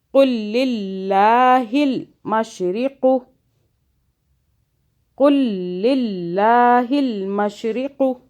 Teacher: دونوں لام کی 2 بازیں بنانی ہے